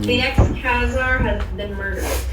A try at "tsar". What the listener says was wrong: The word actually C does not pronounce. They're called Tsar. Tsar. The ex-Tsar. C does not pronounce.